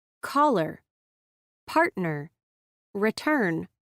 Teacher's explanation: The consonant sounds C, P, and T are strongly aspirated when followed by a vowel sound in a stressed syllable.